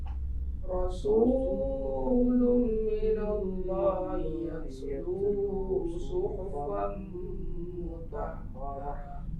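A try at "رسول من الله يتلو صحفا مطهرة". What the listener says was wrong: Rasul mat asli jangan terlalu panjang, sekali tekan aja. Justru yang dengung di lumnya. Tanwin jumpa dengan mim itu idgham bi gunnah. Rasulun minallahi yatlu suhufan mutahharah.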